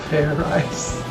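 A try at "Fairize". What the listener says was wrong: Like I said, it's not fair rice, it's fair eyes. Do it again, and this time make sure you pronounce the Z.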